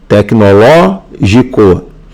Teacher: Na letra B, tecnológico, tecnológico é pró pararoxítona. A sílaba tônica, ó, é a antepenúltima.